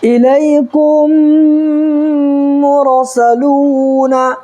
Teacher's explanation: واو مدہ کو 1 الف برابر کھینچ کر کے پڑھیں گے، اور 1 الف کی مقدار یعنی 1 سیکنڈ کھینچ کر کے پڑھیں گے